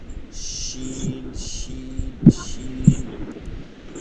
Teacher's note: ক্ষেত্রে দাঁতের প্রয়োজন আছে সিনের ক্ষেত্রে কোনো দাঁতের প্রয়োজন নাই বিপরীত শিন হচ্ছে জিহ্বার মধ্যখান তার বরাবর উপরে তালুতে গিয়ে লাগবে এরপরে উচ্চারণ হবে শিন শিন শিন আমাদের প্রথম দুইটা ভিডিওর মধ্যে